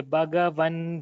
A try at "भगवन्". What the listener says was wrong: Just one thing, the Bhagavan, if it is, if the Bha is more clear as a Mahaprana, it would be perfect.